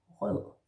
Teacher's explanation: Rød, R in the throat, the kind of sound, and the soft E.